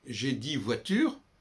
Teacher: Mais si je dis j'ai 10 voitures, on n'entend pas le X. Pourquoi, quand nous nommons le chiffre, on le nomme comme si il était suivi d'un autre mot commençant par une voyelle.